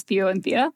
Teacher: I have that dental T at the beginning unaspirated